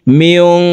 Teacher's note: মিম নুন জের মিয়ং, ইকফা গুন্না, নুন সাকিনের পর ইকফার হরফ কাফ আসছে, এই কারণে এই নুন সাকিনকে নাকের ভিতরে লুকাইয়া গুন্নার সহিত পড়ব